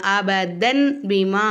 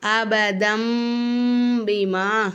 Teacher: இங்க நம்ம அபதன் பீமா அப்படின்னு வாசிக்காம அபதம் பீமா அப்படின்னு நம்ம வாசிக்கணும் தன் அப்படின்னு சொல்லாம தம் அப்படின்னு நம்ம இந்த இடத்துல சொல்லணும்